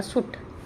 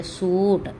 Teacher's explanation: ਔਂਕੜ ਵਿੱਚ ਸ਼ਬਦ 'ਤੇ ਘੱਟ ਸਟ੍ਰੈਸ ਪੈਂਦਾ ਹੈ ਔਰ ਦੁਲੰਕੜ ਵਿੱਚ ਜ਼ਿਆਦਾ